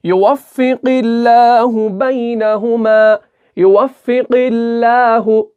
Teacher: تو اب ہم یہاں پر دیکھیں گے اللہ کا نام آیا اور اس سے پہلے والے حرف کے نیچے زیر ہے، تو اب آپ کو سمجھ میں آیا ہوگا کہ اللہ کے لام کو باریک پڑھنا ہے